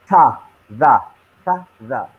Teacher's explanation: The tip of your tongue, you can see it touches the upper teeth. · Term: dental